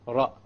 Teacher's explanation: One precise ra. And we don't roll it to produce multiple ras like this.